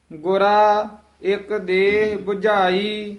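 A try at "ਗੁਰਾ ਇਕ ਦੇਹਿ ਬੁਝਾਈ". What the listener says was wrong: ਇਹ ਗੁਰਾ ਪਦ ਤੇ ਬਿੰਦੀ ਨਹੀਂ ਲਾਉਣੀ ਹੈ, ਗੁਰਾ ਹੀ ਉਚਾਰਨ ਕਰਨਾ ਹੈ। ਗੁਰਾ ਇੱਕ ਦੇਹ 부ਝਾਈ। 부ਝਾਈ ਪਦ ਜਿਹੜਾ ਹੈ ਇਹ ਕਸ ਕੇ ਬੋਲਣਾ ਹੈ, 부ਝਾਈ ਨਹੀਂ ਕਹਿਣਾ ਹੈ।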